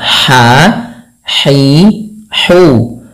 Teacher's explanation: Bagaimana cara pelafalan ha-nya? Yaitu dari tengah tenggorokan kita. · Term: ha kecil